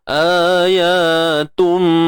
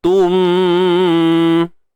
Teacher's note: Tanwin bertemu mim, idgham bi gunnah. Masukkan bunyi tanwin tu ke dalam mim dan dibaca secara sempurna, dengung sempurna. Ayatum, tutup bibir.